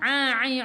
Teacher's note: daripada kerongkong. Bukan daripada hidung.